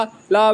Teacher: जिसके उच्चारण में हवा जीभ के पार्श्व या बगल से निकल जाए उसे हम ला व्यंजन कहते हैं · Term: पार्श्विक